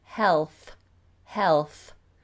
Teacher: rather than doing hell I do the L with the tongue out